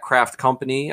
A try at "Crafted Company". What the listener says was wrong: At Crafted Company. There's like a D snuck in there. Crafted with No E. Crafted.